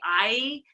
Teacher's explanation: when you say I you can see your mouth moves because it has two vowel qualities